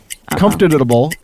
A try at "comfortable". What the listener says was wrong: add an extra syllable in it. Say it normal. You say comfortable.